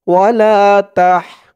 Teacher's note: তাহার আওয়াজটা গলার ভিতর থেকে চিকুন করে বের করতে হবে